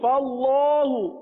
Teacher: فا باریک رہے گا، اللہ عز و جل کے لام کو صرف پر پڑھیں گے